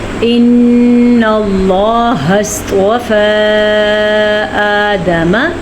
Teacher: ان اللہ اصطفیٰ، دیکھیے میں نے بھی آپ کو بتایا تھا کہ طا صاد یہ پر پڑھے جانے والے حروف ہیں، تو ہم نے یہاں پہ ان کو پر پڑھا ہے، موٹا کر کے پڑھا ہے۔ لفظ اللہ کو ہم نے پر پڑھا ہے کیونکہ لفظ اللہ سے پیچھے زبر ہے، اور نون پہ غنہ کرنا آپ نے نہیں بھولنا۔